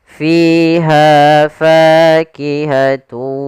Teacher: Yang pertama pada lafal fi, yaitu adanya kasrah bertemu dengan ya, kita panjangkan 2 harakat fi-nya. Kemudian pada lafal ha ada fathah bertemu alif, maka juga mad tabi'i, panjangnya 2 harakat.